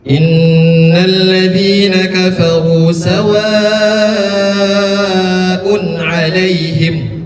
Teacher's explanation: Harkatnya mad wajib muttasil 5 harakat.